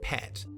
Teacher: If you look at where vowel sounds are made in the mouth, the eh vowel in a word like pat is usually made in the bottom front corner of the mouth, but when Kiwis speak, it's pronounced like the higher eh vowel and sounds like pet to listeners from other countries. This leads to a chain reaction, as if pat pushes up to sound like pet, then pet is pushed up even further to sound like pit. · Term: rising front vowels